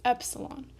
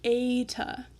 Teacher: The P cuts off the E sound very quickly.